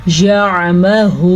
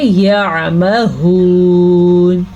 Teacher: واو ساکن سے پیچھے والے حرف پہ پیش ہے تو اسے ہم کھینچ کے پڑھیں گے. واو لین کو ہم نہیں کھینچ سکتے واو مدہ کو کھینچ کے پڑھیں گے.